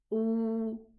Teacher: Meaning I'm gonna apply this mad when I pronounce the hamza. The hamza, dhamma, has a waw after it. So it's gonna be pronounced oo, 2 counts.